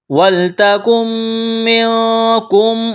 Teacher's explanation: نون ساکن کے بعد میم مشدد ہے تو نون کا میم میں ادغام کریں گے، غنہ کریں گے